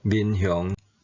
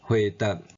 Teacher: 第五声变做第七声